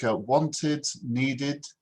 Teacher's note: And if it's like wanted, needed, then it's an id sound. So if the word ends with a T or a D, then it's an id at the sound at the end.